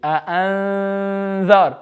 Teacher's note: So this is what you call ikhfa. You're hiding the noon. You're not hiding it completely, but you're hiding it slightly. You're just making the sound. · you read the noon very faintly